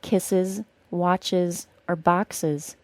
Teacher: When we add a syllable for the -es ending, that final s is always pronounced as a z sound.